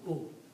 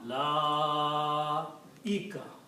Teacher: so don't pronounce wow. Pronounce alif with the dhamma is light sound. U. But stretch on lam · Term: long mad